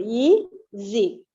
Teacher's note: When you say Z, our tone should fall down.